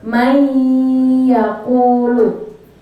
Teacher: Man di situ ada nun mati bertemu dengan ya. Nah, caranya bacanya dimasukkan lalu berdengung. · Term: idgham bi gunnah